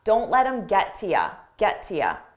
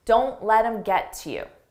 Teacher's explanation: Many native speakers will drop this to ya.